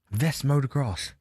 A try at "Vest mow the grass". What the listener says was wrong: Yeah, but you're saying mow the grass. You're going up. No. Vest mow the grass.